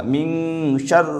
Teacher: نون ساکن کے بعد حروف اخفا کے 15 حرفوں میں سے شین آ رہا ہے، یہاں پر اخفا ہوگا